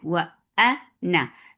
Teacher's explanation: na is short too, because we are not pronouncing this alif